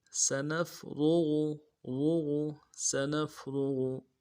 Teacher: سنفرغ، سنفرغ، سین کی سیٹی باریک ہوگی، نون کو فا کے ساتھ ملانا ہے. را کو موٹا ادا کریں گے، غین کو موٹا ادا کریں گے.